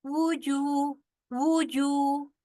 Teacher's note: واو کے اوپر بھی پیش ہے, جیم کے اوپر بھی پیش ہے, اور آگے واو مدہ آ رہا ہے, لہذا واو سے ہونٹ گول ہوں گے